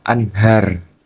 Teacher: nun sukun dibaca jelas tanpa ada dengung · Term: idhar halqi